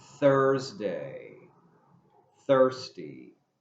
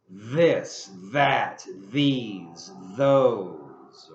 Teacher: One is the theta, which is an unvoiced th sound. For example, Thursday, thirsty.